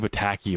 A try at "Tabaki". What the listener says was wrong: Stop pronouncing it that way. Tabaki. Tabaki. You keep saying bataki or pataki. God damn it, stop doing that to me.